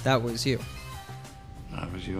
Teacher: he uses a glottal T when pronouncing the T at the end of that this means that the T sound isn't fully pronounced and instead · the T sound isn't fully pronounced and instead is cut off at the back of the throat